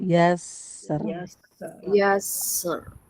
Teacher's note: Jadi dia ngalir dulu sinnya dan tipis.